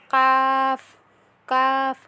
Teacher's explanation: জিহ্বার গোড়া একটু আগে বরাবর তার বরাবর উপরের তালুর সাথে লাগিয়ে পড়তে হবে কাফ। কফটা যেমন ছিল তার থেকে একটু এগিয়ে আসতে হবে কাফ।